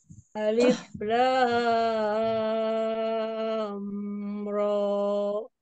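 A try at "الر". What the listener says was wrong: Ro-nya dua harakat, Bu, kepanjangan. Ro, alif lam ro.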